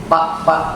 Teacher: terjadinya Pa itu karena dua bibir